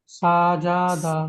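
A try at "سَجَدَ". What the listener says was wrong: জাবার জের, জাবার জের পেশ যখন থাকবে, তখন সেই অক্ষরগুলো কোনো টান হবে না, তাড়াতাড়ি পড়তে হবে, মানে বিনা টানে তাড়াতাড়ি পড়তে হবে। সেই জন্য এখানে সাজাদা এরকম বললে হবে না, এখানে বলতে হবে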